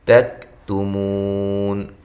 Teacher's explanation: کاف کو ہلانا نہیں ہے، اور کاف باریک ہے، تا دونوں تائیں باریک ہیں.